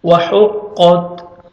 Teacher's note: پڑھیں گے، ہا میں ساؤنڈ مکس نہیں ہونا چاہیے، قاف کو موٹا کر کے پڑھیں گے اور تا کو باریک پڑھیں گے اور لائٹ سے ساؤنڈ آئے گا تا کا، وَحُقَّتْ، وَأَذِنَتْ لِرَبِّهَا